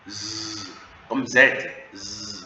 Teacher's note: Quand vous dites Z, vous allez voir que ça vibre. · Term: voiced